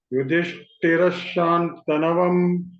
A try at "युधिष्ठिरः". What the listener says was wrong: Only in Yudhishthira, the Dha Mahaprana I couldn't hear, but otherwise it was okay.